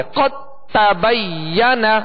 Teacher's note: جب ادغام کیا تو دال کو تا میں مکمل داخل کر دیا. اب اس کو قد تبین نہیں پڑھیں گے، اس کو قد تبین یعنی تا پڑھیں گے، دال کو تا میں داخل کر دیا، دال کو تا میں داخل کر دیا، اب دال کی کوئی صفت باقی نہیں رہے گی، دال نہیں پڑھیں گے بلکہ تا ہی پڑھیں گے۔ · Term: ادغام متجانسین تام, ادغام تام